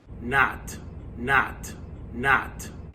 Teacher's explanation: The lot vowel is going to be very open, fronted, no lip rounding in a New York accent.